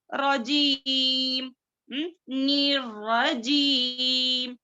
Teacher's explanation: मद्दे असली में 2 हरकत, 2 काउंटिंग्स